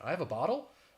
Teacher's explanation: you have that rising intonation at the end, which would make it a question